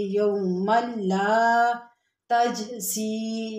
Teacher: الف خالی اس سے پہلے زبر الف مدہ ہے، تھوڑا سا کھینچیں گے